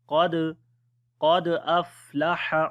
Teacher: Qaf we read in heavy sound, on the dal we make qalqala, which is the weak. Qad aflaha, on the fa again we make hams quality.